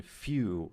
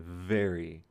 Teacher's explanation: this labiodental sound would be when your lower lip is touching your top tooth